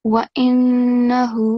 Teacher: on top of ha, we have inverted madda, so make sure that you prolong it for at least 2 seconds counts or beats